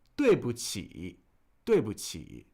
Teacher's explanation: Fourth tone, neutral tone, third tone.